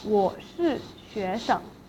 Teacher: the 生 in 学生 will be pronounced as 生 in the neutral tone.